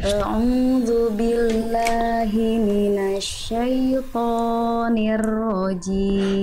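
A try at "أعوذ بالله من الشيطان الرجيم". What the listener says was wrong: jangan Kepanjangan ya syaitonirrajim dua harakat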